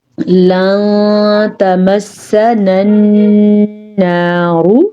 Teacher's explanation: را کو پر پڑھیں گے، را پہ پیش ہے اسی لیے